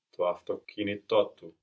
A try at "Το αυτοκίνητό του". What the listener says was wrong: Here it sounded like you moved the accent to αυτοκίνητότου, but we need to hear both. To αυτοκίνητότου.